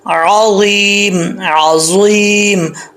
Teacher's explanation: عین کو پڑھنا ہے، عین ہی پڑھنا ہے، حمزہ نہیں پڑھنا